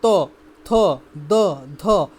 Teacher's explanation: যেইসব বর্ণগুলো উচ্চারণ করলে ডাইরেক্ট আমাদের দাঁতাই হিট করে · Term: দন্ত বর্ণ